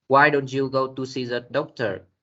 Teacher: Question functioning as a question. The pitch go up at the beginning and gradually fall at the end.